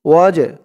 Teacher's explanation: এই জিমটা কলকলার হরফ ধাক্কা দিয়ে পড়তে হবে